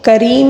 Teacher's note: کریم میں را کو باریک پڑھیں گے کیونکہ را کے نیچے زیر آیا ہے